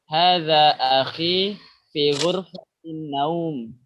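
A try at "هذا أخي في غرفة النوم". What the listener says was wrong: Ahsan.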